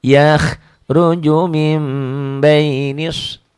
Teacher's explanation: Setiap nun mati ketemu ba, bunyi nun matinya berubah menjadi bunyi mim mati. Ini ada mim tuh.